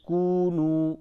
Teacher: دونوں واو مدہ ہے، دونوں کو کھینچیں